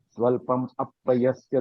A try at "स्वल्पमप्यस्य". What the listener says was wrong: जी, पुनः एक बार फिर, स्वल्पम अपयस्य नहीं है, अप्यस्य, आधा प है, अप्यस्य। अप्यस्य, स्वल्पम अप्यस्य। ये जो म है, म के नीचे हलंत है। के नीचे हलंत और ये जो अ है, ये मिलकर क्या होगा, ये म जो है उसका हलंत जो है वो चला जाएगा।